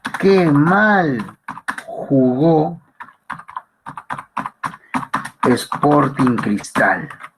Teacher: tenemos el descendente, que se encuentra en las demás oraciones, pero sobre todo en las exclamativas